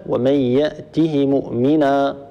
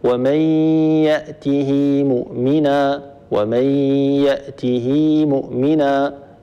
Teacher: ال74 من سوره طه وهذه على فكره في وجهان للامام قالون الوجه الاول هو ترك الصله ومن ياته مؤمنا وهو الوجه المقدم اداء والوجه الثاني هو بصلتها هكذا ومن ياته مؤمنا ومن ياته مؤمنا اذا عندنا الصله وعدم